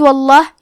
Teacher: لفظ الجلالہ کے لام کا حکم ہے تفخیم تو ہمیں حرف اللام کو موٹی آواز میں پڑھنا ہے